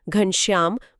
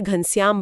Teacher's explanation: ब्रज भाषा में, तालव्य 'श' और प्रतिगामी 'श' का उच्चारण बहुत दुर्लभ या लगभग न के बराबर होता है। ये दोनों अक्सर साधारण एल्वियोलर 's' में परिवर्तित हो जाते हैं। उदाहरण के लिए, "घनश्याम" बहुत आसानी से "घंस्यम" बन जाता है।